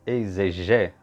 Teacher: a penúltima sílaba pronunciada mais fortemente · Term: paroxítona